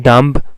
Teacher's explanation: So in dumb, once again don't disguise with the spelling. In dumb, b is silent, so it is ending at a nasal consonant m.